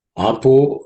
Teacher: Apo is actually Apaha, the Visarga becomes O.